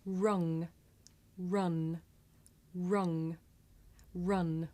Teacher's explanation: ng is made at the back of the mouth and n is made behind the teeth